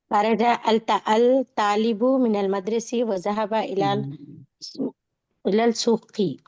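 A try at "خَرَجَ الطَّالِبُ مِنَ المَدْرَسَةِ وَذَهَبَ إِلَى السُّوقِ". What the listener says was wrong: हाँ, टांग तोड़ तोड़ के पढ़े, मिला के पढ़िए पूरा एक साथ। हाँ, शमसिया खमरिया पढ़ा है ना, तो खरजा अत्तालिबी क्यों पढ़ रहे हैं आपको? बोले खरजत तालिबु मिनल मदरसती व ज़हबा इला सूक़, ऐसा बोलिए, मिला के पढ़िए फिर।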